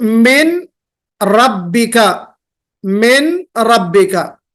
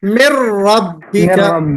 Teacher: ہمیں ادغام کر دینا، مرج کر دینا ہے۔ کس کو مرج کرنا ہے؟ نون کو، نون ساکن کو مرج کرنا ہے کس میں؟ را میں۔